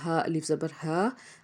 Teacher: اس کے بعد ہے ہا، الف زبر ہا، الف سے پیچھے زبر، ایک الف کے برابر کھینچیں گے، اور ہا جو ہے حرف حلقی میں سے ہے، حلق کے نچلے حصے سے اس کو ادا کریں گے